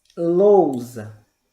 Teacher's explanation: Em lousa, nós vamos ter o O e o U. O O é vogal e o U é semivogal.